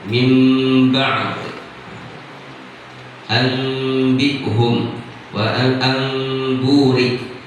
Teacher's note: Iqlab adalah tahwilu syai' an wajhihi, mengganti atau memindahkan sesuatu dari tempatnya. Nah, asalnya nun menjadi huruf mim.